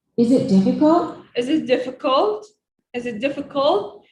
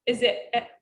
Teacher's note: She raises her sounds up in the last word in this sentence.